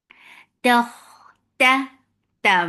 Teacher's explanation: very sharp sound, no flow of sound or breath.